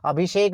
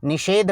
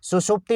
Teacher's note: जो शय होती है वो आपकी मूर्धन्य शय होती है, मूर्धा से जो बोली जाती है